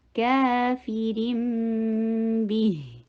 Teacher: اقلاب ہو رہا ہے، تنوین کی آواز، نون کی آواز کو میم کے ساتھ چینج کر رہے ہیں